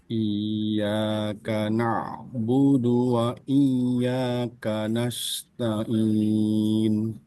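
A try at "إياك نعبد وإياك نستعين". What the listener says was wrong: itu ainnya masih kurang jelas dan tadi apa namanya tasdid ya kepanjangan.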